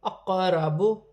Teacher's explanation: قاف ساکن ہے، حروف قلقلہ میں سے ہے، قلقلہ کے ساتھ ادا کیا جائے گا